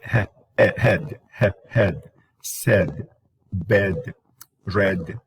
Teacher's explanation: Okay, so that is called the epsilon. So it's mid, front, lax, unrounded.